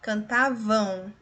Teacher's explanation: este M aqui tem som de u é uma semivogal · aqui tem som de u é uma semivogal cantavam então aqui eu tenho ditongo e esse ditongo ele é nasal · aqui eu tenho um ditongo, e esse ditongo, ele é nasal, como eu disse, às vezes o M vai me indicar o som nasal, e é decrescente. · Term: ditongo nasal